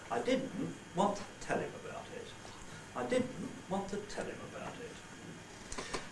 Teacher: The first one is the falling, rising pattern beginning on did. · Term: two word groups